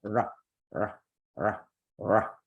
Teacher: And with the tongue curled back, that's why we say retroflex, right? It's a back bend for the tongue. You make English sounds just like you would in English, but the tongue position is different, so they're going to sound different.